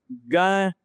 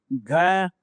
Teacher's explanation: और महाप्राण यानी कि वायु जो है, हवा जो है वो ज्यादा यूज में हो बोलते समय।